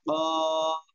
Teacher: জিহ্বার গোড়া, তারপর আবার উপরে তালুর সঙ্গে লাগাইয়া, 2 নক্তাওয়ালা কফ।